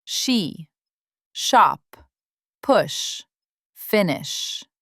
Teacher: tongue is further Back. Lips slightly round.